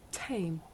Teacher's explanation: in English we say the sound at the beginning of the word came with a big puff of air